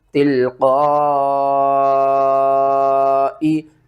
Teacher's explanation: مد اصل ہے، اس کو آپ نے 5 الف کے برابر کھینچ کر پڑھنا ہے۔